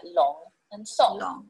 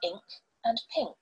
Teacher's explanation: However, we also see it in words like ink and pink. It is a velar nasal, meaning that the back of the tongue rests against the velum at the soft palate.